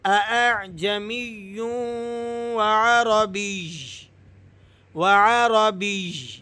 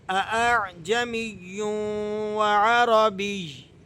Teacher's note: تو یا کو آپ نے ذرا سختی کے ساتھ اور اس کی آواز کو، اس کے ساؤنڈ کو تھوڑا سا ظاہر کر کے یہاں پر وقف کرنا ہے